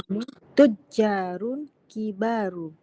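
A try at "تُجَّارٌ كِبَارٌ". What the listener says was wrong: kibaru, Ibu bacanya kibaru gitu ya Bu ya? Nah, itu keliru. Bukan kibaru, tetapi tujarun kibarun.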